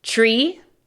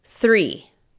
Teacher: Con tree, tu lengua se va a tu paladar. Con three, tu lengua tiene que tocar tus dientes.